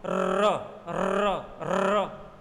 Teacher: बोला एक बार, लेकिन बहुत सारे र लुढ़कते लुढ़कते बाहर निकले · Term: लुंठित व्यंजन